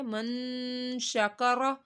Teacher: نون ساکن کے بعد شین آ رہا ہے اخفا کا، تو ہم نے یہاں پہ گنہ اس وجہ سے کیا ہے